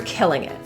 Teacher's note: The T in this phrase is generally pronounced as a glottal T. It's stopped in your throat. Instead of releasing it.